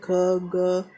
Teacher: और सेकंड है संघर्षवी, मतलब इसमें जिनके उच्चारण में मुख के दो अवयव एक दूसरे के निकट आ जाते हैं और वायु निकलने का मार्ग संकरा हो जाता है, तो वायु घर्षण करके निकलती है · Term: संघर्षी व्यंजन